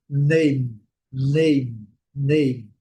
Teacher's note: Em inglês a gente termina a palavra com a boca fechada. Name, name, name. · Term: M do inglês